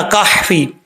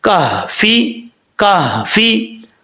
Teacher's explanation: کاف کے بعد ہا ہے، اب ہا کو بھاری ساؤنڈ کے ساتھ پڑھیں گے